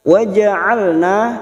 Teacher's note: huruf ain yang memiliki sifat tawasud dan jahar jangan samakan dengan hamzah. Wastul halqi bagian tengah tenggorokan ya. · Wastul halqi bagian tengah tenggorokan ya. Rongga tenggorokan lebih menyempit. Wa ja'alna na fathah diikuti alif 2 harokat.